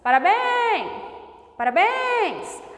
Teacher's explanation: A última sílaba é tônica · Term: oxítonas